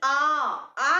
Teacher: जो आ है ना उसमें मुंह पूरा खुल रहा है। विवृत पूरा खुलना, विवृत, वी मतलब विस्तार, विवृत पूरा खुलना। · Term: विवृत स्वर